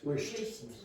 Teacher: >> So this and T is not vibrated. T is just an unvoiced consonant. There's no vibration here.